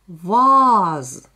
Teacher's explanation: мы слышим в слове «ваз» совсем не короткий звук «а», мы слышим длинный звук «а»